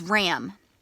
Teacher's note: do you hear that nasally a that we practiced yesterday